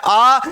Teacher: आ के उच्चारण में मुंह सर्वाधिक खुलता है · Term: विवृत्त स्वर